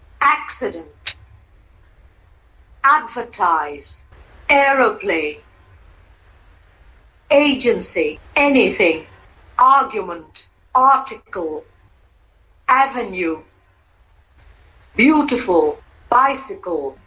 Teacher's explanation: Each of these words has 3 syllables, and the primary accent is on the first syllable. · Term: primary or tonic accent